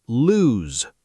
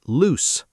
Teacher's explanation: Lose is lose, with a z. Loose is loose, with an s.